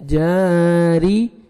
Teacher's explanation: سے پہلے زبر جیم کو آپ نے 1 سیکنڈ کھینچنا ہے را کے نیچے زیر ہے را کو آپ نے باریک پڑھنا ہے